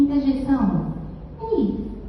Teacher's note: eu continuo tendo a vogal núcleo e que agora o som do e está fechado Em vez de e e e Mas é a mesma vogal